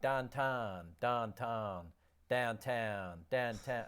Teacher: people from Pittsburgh pronounce the vowel sound in town like tan